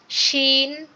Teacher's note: জিম এবং শিন দুইটাই দাঁতের মাড়ি চেপে উচ্চারণ করবেন, জিম শিন। আর ইয়া যখন উচ্চারণ করবেন তখন ইয়া ইয়া ইয়া বলে গালটা খুলে যাবে, জিম শিন ইয়া, জিম শিন ইয়া।